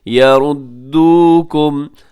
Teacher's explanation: واو ساکن سے پہلے پیش واو مدہ تھوڑا کھینچ کے